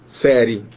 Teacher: A gente sai de um som baixo e entra num som alto, então a gente cresce, porque o I é uma semivogal e o E é uma vogal, série, não é verdade?